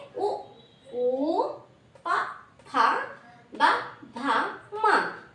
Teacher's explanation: Next ఓష్యాలు ఓస్ట్యం అంటే పెదవి అని అర్థం. పెదవుల సహాయంతో పలకబడుతున్నాయి కాబట్టి వీటిని ఓషట్యాలు అని పిలుస్తాము. అవి ఏంటంటే ఉ ఊ ప ధ మ ఇవి పెదాల సహాయంతో మనం పలుకుతున్నాము.